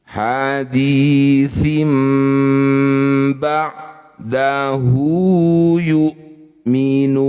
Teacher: Kalau tanwin atau nun sukun bertemu ba, namanya iklab. Bunyi kasroh tanwinnya tukar dengan mim.